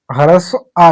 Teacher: इसका जब हम उच्चारण करते हैं तो यह जीभ के मध्य वाले भाग से उच्चरित होता है। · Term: मध्य स्वर